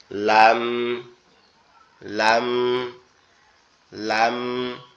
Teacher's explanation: লামের উচ্চারণটা মূলত জিহ্বার আগা উপরের তালুর সাথে লাগবে, জিহ্বার আগা উপরের তালুর সাথে লাগবে, লেগে একদম নরম আওয়াজে উচ্চারিত হবে, লাম, লাম, লাম, এরকম ভাবে আওয়াজটা আসবে।